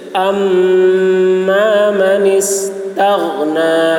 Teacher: میم مشدد ہے، غنہ ہوگا ، اس طریقے سے، اما من استغنی، غین کی آواز موٹی